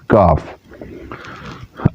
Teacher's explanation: کاف جو کتاب والا ہے اس کو زبان کی جڑ اور تالو کے سخت حصے تھوڑا آگے کی طرف لائیں گے تو اس کو ادا کریں گے اور اس میں جنبش اور قلقلہ پیدا نہیں ہونا چاہیے